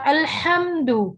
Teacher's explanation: ہا وسط حلق سے نکلتا ہے. اگر ہم اس کو اقصا حلق سے ادا کریں گے، الحمد کو الحمد کر دیں گے تو الحمد تمام تعریفیں، اور جب دوسرے ہاتھ سے اس کو بدل دیں گے تو اس کا میننگ آپ دیکھیے، آگ کی حرارت کا ختم ہونا اور موت طاری ہونا.